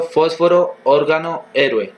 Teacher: palabras que llevan el acento en la antepenúltima sílaba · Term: palabras esdrújulas